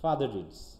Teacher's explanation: যখন আমরা দ্রুত বলছি তখন ওই আগের যে র সাউন্ডটা হালকা আসতেছে সেটাও আমরা অনেক সময় পাই না